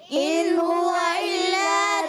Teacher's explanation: ان حمزہ کو خوب ظاہر کر کے پڑھیں گے کیونکہ یہ الف نہیں حمزہ ہے